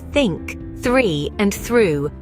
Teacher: the unvoiced th on the other hand appears in words like think three and through where your vocal cords remain silent